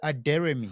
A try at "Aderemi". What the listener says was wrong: Yeah, but there's no Mary in it.